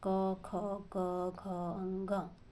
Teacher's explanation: इनके उच्चारण में जीवा का पश्च भाग कोमल तालो को स्पर्श करता है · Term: कंठ